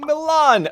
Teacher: where the Milanese drops the final vowel to become Milan again